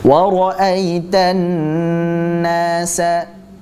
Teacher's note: Kita baca dengan hukum gunnah. Dibaca gunnah, kita panjangkan gunnahnya.